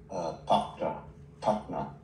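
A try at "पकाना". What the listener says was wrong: Pakana. Pakana. This A, okay, pakana. Pa, ka with A and then na with A, pakana.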